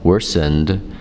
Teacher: Now this ed sounding ending has the d sound because it's voiced.